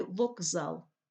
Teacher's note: і теж собі стає дзвінким уподібнюється за дзвінкістю у слові вокзал к звучить як Ґ під впливом дзвінкого сусіда з